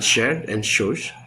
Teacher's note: Sh, as in shared and shoes, is a voiceless post-alveolar fricative.